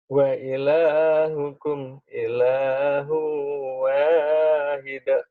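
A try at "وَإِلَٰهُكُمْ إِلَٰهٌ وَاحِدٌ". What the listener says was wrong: Wa ilahukum ilahu wahid. Hanya kurang hamas tuh. Wahid. Ha. Rahma gitu kurang. Wahid. Kurang hamas ya lagi.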